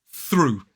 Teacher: And then what we do is we blow air down the tongue without using our vocal cords and through the teeth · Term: unvoiced sound